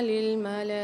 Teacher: لام کے اوپر کھڑا زبر مد آ رہا ہے تو یہاں پر ہم 6 الف کی مقدار کھینچ کے پڑھیں گے